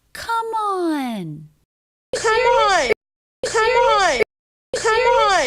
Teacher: All smoothly linked together in one arch, one thought group, ending M links into beginning vowel.